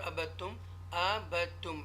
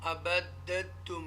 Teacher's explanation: ये दाल साकिना है लेकिन उसके बाद ता मुशद्दा है पेश के साथ, तो हमने ये जो दाल है उसको हम छोड़ देंगे, उसको हम नहीं पढ़ेंगे.